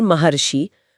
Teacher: यहां गुण संधि का बहुत ही शानदार नियम लागू होता है। जब आ के बाद ऋ आता है तो दोनों मिलकर अर बन जाते हैं। इसीलिए महर्षि बोलते समय वह अर की ध्वनि साफ सुनाई देती है।